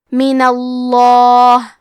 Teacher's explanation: کلمت من کے آخری میں نون پہ زبر ہے تو لفظ الجلالہ کے لام کا حکم ہے تفخیم، تو ہم حرف اللام کو موٹی آواز میں پڑھیں گے.